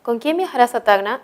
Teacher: es una pregunta pero la respuesta no puede ser sí o no así que su tono es descendente